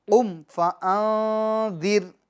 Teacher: را کو کیا کریں گے؟ باریک پڑھیں گے، چونکہ را ساکن سے پہلے والے حرف کے نیچے زیر ہے